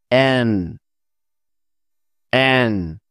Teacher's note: ওপরের তালুতে জিহবার অগ্রভাগ লাগিয়ে পড়তে হয়